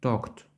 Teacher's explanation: щоб вимовити форму минулого часу правильного дієслова ми говоримо Talk та додаємо звук т на кінці